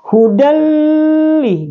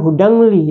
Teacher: idgham bila gunnah atau dibaca tanpa dengun. Contoh hudalli, jadi bukan hudangli ya.